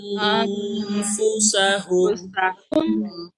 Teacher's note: Tetapi kalau dia bertemu dengan huruf ikhfa seperti fa ini, maka dia bukan ditahannya dalam bentuk huruf nun, tapi berubah menjadi dengung, yaitu ang, ya, ng.